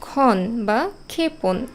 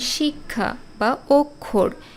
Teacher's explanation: আগে ক এর উচ্চারণ হচ্ছে তারপরে খ আসছে